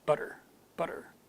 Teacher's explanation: technically it's called a flap sound where the tongue just briefly touches the top of the mouth